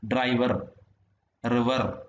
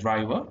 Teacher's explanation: In GIE, R is always a rolled or tap sound, whereas in RP it has various phonetic realizations. അതായത് ഈ റ് എന്ന് പറയുന്ന sound നമ്മൾ എല്ലായിടത്തും ഉച്ചരിക്കും.